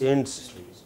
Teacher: main stress on the first syllable